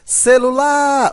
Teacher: na palavra celular, as sílabas átonas são o sé e o lu